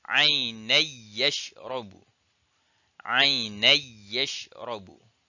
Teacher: Dia idgham. Tanwin tu dia idgham dalam kepada ya, tapi dia tak gunnah. Dia tak ada dengung. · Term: idgham tanpa gunnah